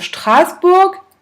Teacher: On entend que le A, on le traîne un petit peu.